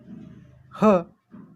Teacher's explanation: व्यंजनाचा पुढचा प्रकार आहे महाप्राण. या वर्णांचा उच्चार करताना तोंडावाटे फुफ्फुसातील हवा जोराने बाहेर फेकली जाते आणि तो वर्ण आहे ह, म्हणून ह हे व्यंजन महाप्राण आहे.